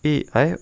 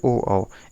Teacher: ए ऐ है कंठ तालव्य और ओ औ है कंठोष्ठ